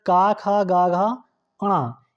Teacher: इसका उच्चारण होता है कंठ से।